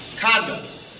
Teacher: If you want to use this word as a noun, the emphasis or the stress goes on the first syllable.